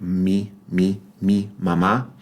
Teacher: M is going to have at least two different, maybe 3 different pronunciations depending on placement or context. In Spanish, the letter M is pronounced just like the English M. It's a bilabial sound